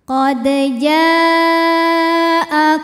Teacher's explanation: Hamzahnya a pada kata ja'akum. Maka jim dipanjangkan boleh 4 boleh 5 harokat, tidak boleh 2 ya. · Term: mad wajib muttasil